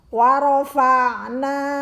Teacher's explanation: Wa rafa'na, ainnya sukun, maka cara membacanya keluar huruf ain tersebut dari kerongkongan bagian akhir.